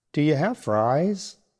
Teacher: Saying it with a slight upward pitch at the end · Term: rising intonation